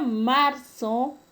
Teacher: El término marzo, la mayor fuerza de voz está en la penúltima sílaba y no se tilda porque termina en una vocal. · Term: palabra grave